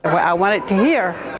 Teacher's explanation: The second feature here is a glottal replacement of final consonants. You can hear the glottal stop instead of a T.